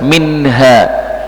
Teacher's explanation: nunnya ini jelas tidak dibaca dengung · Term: izhar